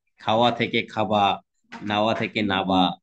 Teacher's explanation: আমি কি তোমাকে বোঝাতে পারলাম যে ওটা আসলে একটাই অন্তস্থ ওয়া, ঠিক আছে, কিন্তু ব শোনা যাচ্ছে, তাই নবাবকে বলা হয়েছে নবাব। অর্থাৎ ওই বটা ওখানে ওয়া থেকে ব, এমন একটা পরিবর্তন আমরা পাচ্ছি। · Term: বশ্রুতি